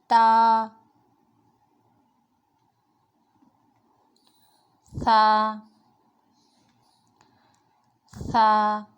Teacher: زبان کی نوک جب اوپر کے دانتوں کی جڑ سے ٹچ ہوگی تو تا ادا ہوگا